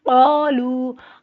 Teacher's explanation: قالو، قاف دو نقطوں والا موٹا پڑھا جاتا ہے. لو کو لمبا کریں گے، جزم والی واو سے پہلے پیش ہے، حروف مدے کا الف کے برابر لمبا ہوگا. اور اس پہ چھوٹی مد ہے، چھوٹی مد کو 3 الف تک لمبا کرتے ہیں، ٹوٹل 4 الف تک لمبا کریں گے.